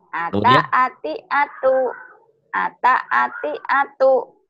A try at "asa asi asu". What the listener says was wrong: Ini sa-nya belum keluar tuh. Sa-nya bukan ta ya, asa, asa ati, kayak sa.